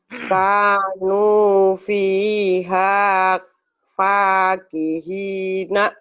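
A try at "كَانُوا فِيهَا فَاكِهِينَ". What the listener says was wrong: K ini panjang, nu ini juga panjang, pi ini panjang, h panjang, pa panjang, banyak yang panjangnya Bu. Kanu fiha fakihina.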